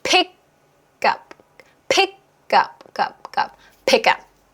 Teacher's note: K 다음에 모음이 붙었잖아요. 그렇죠? 이렇게 해서 하나가 되고 K의 강세가 있지 않을 때는 약간의 된 소리가 나오면 편해요.